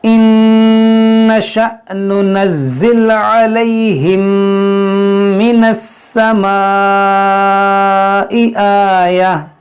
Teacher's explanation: یہاں پر ادغام شفوی کا قاعدہ لگے گا, یعنی یہاں پر غنہ کریں گے